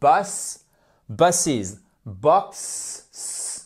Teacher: Et on fait bien le is à chaque fois pour le pluriel.